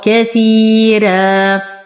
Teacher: نقف على الراء بمد عوض عن تنوين الفتح حركتين مع ترقيق الراء